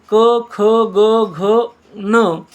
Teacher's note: ज्यांचा उच्चार कंठातून होतो त्यांना कंठवर्ण म्हणतात